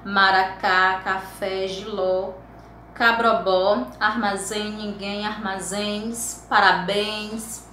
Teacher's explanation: a última sílaba é a forte, a tônica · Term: palavras oxítonas